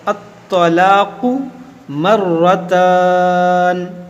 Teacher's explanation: یہ طا حروف مشتعلیہ ہے، اس کو موٹا کریں گے